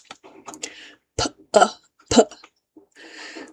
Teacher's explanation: B, B, P. P is like a IPA strongly aspirated P